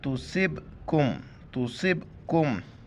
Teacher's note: سواد کو موٹا کر کے با کے ساتھ ملائیں گے اور قلقلہ کریں گے۔ قلقلہ کہتے ہیں آواز کے منہ کے اندر گھومنا اور لفظ کو جھٹکے کے ساتھ پڑھنا۔